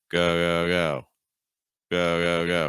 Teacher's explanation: So what our goal is, we want to weaken that G sound, and we want to lengthen that O sound.